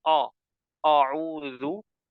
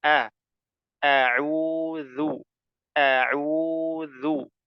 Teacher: auudu auu ya dalam pengucapan lafaz auu maka ditipiskan semuanya ya tipiskan hamzahnya kemudian ainnya ya dan dalalnya ditipiskan semuanya jadi tidak boleh dibaca o auu tidak boleh yang betul a